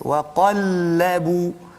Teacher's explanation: Bila sampai lam tu tarik balik nipis. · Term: istifal